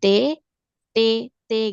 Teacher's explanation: Huruf T kan makhrajnya antara gusi yang di belakang sini dengan gigi seri ya kan. Jadi seolah di sini nih letak lidahnya. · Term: makhraj T